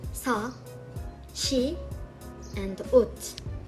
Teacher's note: it is similar to the English s but becomes sh before some vowels, which are e, ya, yo, yu, we, ye, and ye, and becomes t in the end, when it's bachim.